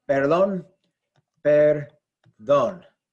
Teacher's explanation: We stress the last syllable. D-O-N is stressed, perdón.